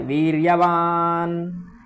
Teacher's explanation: ना थोड़ा आधा है और उस पर जोर भी देना है क्योंकि वह नासिका से निकलता है। नासिका वाले जितने भी वर्ण हैं उन सब पर आपको ऐसे ही करना पड़ता है विशेष।